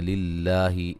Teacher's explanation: للہ لفظ اللہ کو باریک پڑھیں گے، اس سے پہلے حرف پر زیر ہے